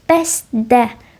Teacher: Bəstdə sözündə s kardır.